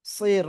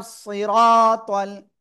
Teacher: আর র করে উপরে জবর। তাহলে কি করব আমরা? মোটা আওয়াজে পড়ব।